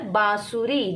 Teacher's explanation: जब हम बांसुरी बोलते हैं तब जो ध्वनि होती है वो हमारे नाक और मुंह दोनों से निकलती है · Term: अनुनासिक